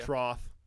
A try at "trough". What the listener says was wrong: Trough. Trough. It's F, man.